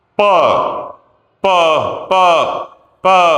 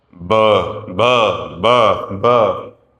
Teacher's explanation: प में और ब में फर्क यह है कि जो प है उसमें वोकल कॉर्ड्स नहीं हिलती हैं। द्वारा करेंगे प प प प ब ब ब ब। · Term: वॉइसलेस